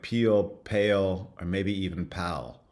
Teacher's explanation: it's velarized, the tongue is being pulled back, and it's pulling the vowels back as well. · The vowels are retracting, are going backwards. So these are front vowels, and they're becoming more back before the la, which is realized as a velarized consonant